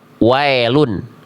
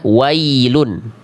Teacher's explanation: Jangan jadi e bunyi vokalnya. Bunyi vokalnya i. · Jangan jadi bunyi vokalnya I. Kalau ya dilafalkan tepat pada makhrajnya dia akan keluar dengan bunyi vokal I, tidak akan jadi E. · Seringkali dibaca dengan vokal E. Miring vokalnya yang harusnya I, miring ke E. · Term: ya sukun